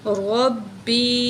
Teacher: یا ساکن اس سے پہلے زیر حروف مدہ میں سے ہے تو ایک الف کے برابر کھینچ کے پڑھیں گے